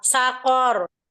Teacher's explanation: Ronya disukunkan, ronya tebal karena sebelumnya fathah. Ya, karena ro sukun sebelumnya ada huruf berharokat fathah ya.